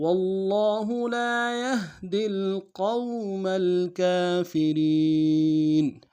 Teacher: را کو باریک ادا کرتے ہوئے یا کے ساتھ ملانا ہے